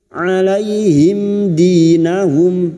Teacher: Mim sukun bertemu dal idhar syafawi. Mim sukun dibaca jelas tanpa mendengung.